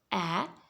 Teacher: your mouth is wide open the back of the tongue goes down and the jaw comes down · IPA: /æ/